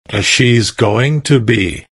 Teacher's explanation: Notice how this is pronounced like gonna be. Instead of 4 syllables, go slash ing slash to slash be there.